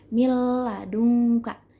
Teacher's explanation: 2 huruf menjadi satu, tapi dengan tanpa gunnah. Bila gunnah.